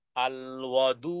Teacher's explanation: দুই ঠোঁটকে গোল করে তারপরে সজরে ধাক্কা দিয়ে উচ্চারণে আওয়াজকে কঠিন করে বলতে হবে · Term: ওয়াও